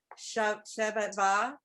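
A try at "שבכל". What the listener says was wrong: Shebachol. Shebachol. It's a chaf.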